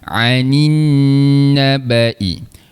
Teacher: Ain tengah rongga kerongkong, kita tekan sikit. Cuba. Kalau hamzah kita lepas saja. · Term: huruf ain